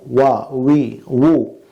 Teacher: വാവിൻ്റെ മഹ്റജ് 2 ചുണ്ടുകളാണ്, താഴെ ചുണ്ടും മേലെ ചുണ്ടും. ഈ 2 ചുണ്ടുകളുടെയും സൈഡ് ഭാഗം, 2 അറ്റങ്ങളിലുള്ള ഭാഗങ്ങൾ തമ്മിൽ ചേർന്നും നടുഭാഗം ഒഴിഞ്ഞുമാണ് വാവിൻ്റെ മഹ്റജ്.